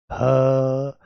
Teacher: ये स्वर यंत्र के मुख से निकलता हुआ आपको महसूस होगा हम तो ह का उच्चारण करते समय ह का उच्चारण करते समय कंठ का द्वार कंठ का द्वार या आप इसको कह लो स्वर यंत्र का मुख खुला रहता है। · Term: काकल्य वर्ण